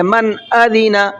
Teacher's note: نون ساکن کو ظاہر کر کے پڑھیں گے